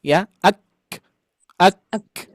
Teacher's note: Huruf kaf itu huruf yang paling unik Ayah Bunda. Syidah dulu baru hams.